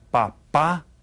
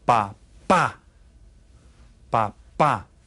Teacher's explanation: you hear the accent on the second syllable